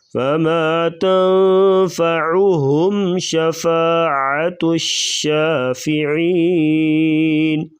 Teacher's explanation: عین گلے سے ادا کریں گے